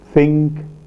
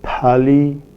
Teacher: Dental place of articulation, produced with the tip and blade of the tongue against the teeth. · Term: dental sounds